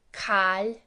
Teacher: the I is becoming more like that a in cat sound